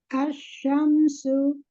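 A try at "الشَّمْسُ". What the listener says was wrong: Bagus.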